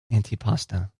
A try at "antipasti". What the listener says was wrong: it's got an eye on the end of it